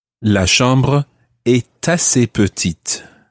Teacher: of the word a a is spelled e s t so the t is pronounced when it's followed by a vowel